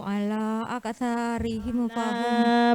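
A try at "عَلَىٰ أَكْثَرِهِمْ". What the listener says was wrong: Panjang ya. Ala aktsarihim.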